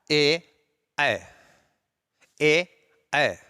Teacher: तो इसमें आता है ए, ए, देखेंगे कंठ और तालु, तालु का जो है पिछला भाग जो कि मूर्धा कहलाता है, तो कंठ और तालु दोनों के संयोग से इनका उच्चारण होता है, इसलिए इन्हें कंठ तालव्य वर्ण कहते हैं।